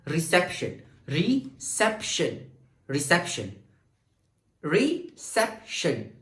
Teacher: आप अपने फिंगर को ऐसे रखे, यहां पर पॉइंट के री, अब सेप जमाएगा तुम सेप शन। ओके, तो री और शन में मेरी एनर्जी कम हो रही है, जबकि सेप में मेरी एनर्जी बढ़ रही है, तो री सेप शन। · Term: स्ट्रेस सिलेबल